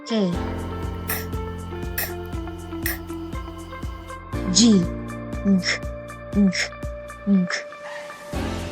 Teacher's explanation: Dito naman dumidiin ng ngala-ngala ang ibabaw ng punong dila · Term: velar